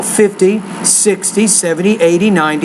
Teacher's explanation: when you do numbers of 10 for example 50 60 70 80 90 you have to put the stress on the first syllable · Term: word stress